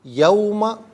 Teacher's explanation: کل یہاں 15 کلمات موجود ہیں، ہر کلمے کو علیحدہ پھر ملا کر پڑھتے ہیں، بغور ملاحظہ فرمائیں۔ یوم، اسے یوما نہیں پڑھیں گے، یوما، کیونکہ یہ حرف لین واو ہے